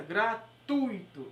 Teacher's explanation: a palavra gratuito, ela não tem acento porque a sílaba tônica é tu